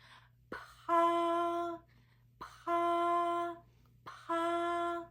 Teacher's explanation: [Music] P this one looks like a l letter P but in Chinese it is an aspirated sound what does it mean it means when you pronounce this sound you produce a strong burst of air